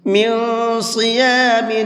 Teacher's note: یہاں نون کے اندر اخفا بھی کریں گے اور ساتھ میں صاد کو مبھر کے بھی پڑھیں گے